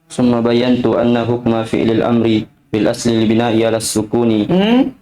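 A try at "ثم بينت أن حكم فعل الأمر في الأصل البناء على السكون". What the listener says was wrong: Salah harokat juga itu ya. Al-bina'u ya.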